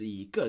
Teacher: When followed by a fourth tone, E changes to a second tone